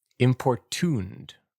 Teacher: Three syllables with the primary stress on the final syllable.